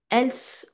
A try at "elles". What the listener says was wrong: Else. on va pas prononcer le S.